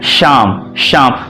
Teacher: दांत से थोड़ा सा अंदर जो ऊपर तालु होता है वो तालू में हमारी जीभ मोटी होकर ऊपर चिपकती है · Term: तालव्य श